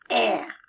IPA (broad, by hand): æ